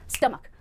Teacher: stomach, 2 syllables है, पहले syllable पर स्ट्रेस आएगा